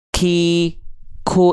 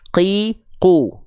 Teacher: kalau keluar percikan nafas itu huruf Kaf